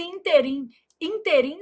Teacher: A palavra interim apresenta erro de prosódia quando pronunciada como oxítona.